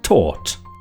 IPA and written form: tɔːt (taught)